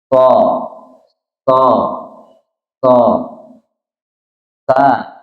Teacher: Sofir ini kalau secara bahasa itu suara yang keluar seperti suara burung, jadi ada desiran, jadi ada desis